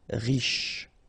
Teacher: Final not really pronounced, so sh is the last sound.